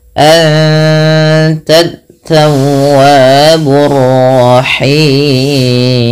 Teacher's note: nun mati bertemu ta, 2 harokat sambil ditahan gunnahnya, sambil ditahan bunyi suara dengungannya. Anta, bukan anta, tapi anta. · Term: ikhfa hakiki